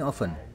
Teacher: Nah, and then ya often tuh bacanya bukan often tapi often. T-nya samar gitu. Bukan samar, memang hilang.